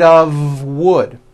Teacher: it's not off wood with an unvoiced f it's all voiced and it's all connected